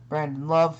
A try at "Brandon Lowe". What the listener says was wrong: That's Brandon Lowe. You said love.